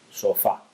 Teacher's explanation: Sofá es una palabra bisílaba en la que la sílaba tónica va al final, en fa. La sílaba átona es so.